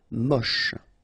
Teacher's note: Don't insist on the final E, then you get the last sound is sh.